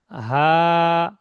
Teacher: হাটা উচ্চারণ হবে পুরো সিনার কাছে, সিনা যেখানে আছে সিনার কাছে একটু আওয়াজ হবে। হা। পুরো গলাতে না, পুরো সিনা।